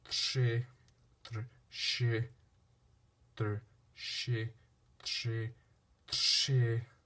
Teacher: However, in other cases, such as tře, the diacritic R makes more of a SH sound.